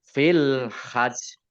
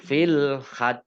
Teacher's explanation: Maka jim tasdid itu sama dengan jim sukun, juga jimnya karena wakof dibaca sukun sehingga jimnya double. Oleh karenanya maka ditekan dulu jimnya itu 2 ya.